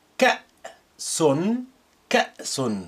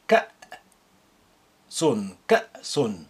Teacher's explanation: Note how I pronounce the hamza with sukun as like a glottal stop.